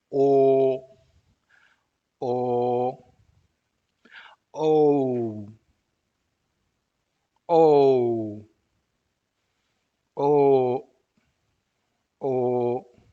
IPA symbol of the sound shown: o